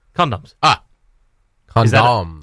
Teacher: A bit of an emphasis on that last syllable. That's because that's where that emphasis lies.